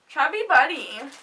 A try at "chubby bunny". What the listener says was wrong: You said buddy. Bunny.